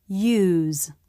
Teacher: the lips flare in preparation for the rounding at the end of the diff thong tongue releases lifts in the back and the lips round in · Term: U diff thong